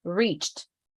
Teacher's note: Very, very subtle T sound, no E.